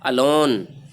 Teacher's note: الون میں لون کو high light کیا گیا ہے، یعنی اس پر سٹریس کرنا ہے